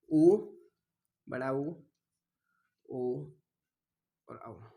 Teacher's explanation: ऐसे कोई वर्ण है जिन्हें बोलने के लिए होठों की जो आकृति है वो गोल हो जाती है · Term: व्रतामुखी स्वर